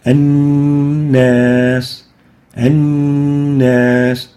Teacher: So we give it ghunnah for 2 units.